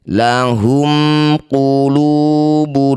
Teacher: Dumah tanwin bertemu lam disebut bacaan namanya idgham bila ghunah. Masukkan bunyi dumah tanwin pada lam tanpa dengung. · Mim sukun bertemu bukan mim bukan ba. Disebut bacaan izhar syafawi. Baca jelas mimnya. Rapatkan bibir. Tidak usah dengung.